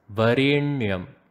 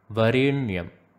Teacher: you have to pronounce the N in Varenyam by having your tongue touch the roof of the mouth, the hard palate to be precise. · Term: retroflex sound